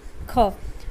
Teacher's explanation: ખમાં તેની સાથે સાથે હવાનો જથ્થો નવો ધ્વનિ પણ ઉત્પન્ન કરશે, એટલા માટે તે મહાપ્રાણ ધ્વનિ છે